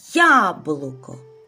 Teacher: перший звук «й». Він м'який приголосний